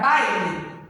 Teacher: o A vai ser uma vogal e o I vai ser uma semivogal